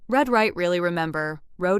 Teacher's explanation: To make the American R, your tongue does not touch the roof of your mouth the same way it might in other languages. Instead, the tongue pulls back a little, and the sound becomes rounded and smooth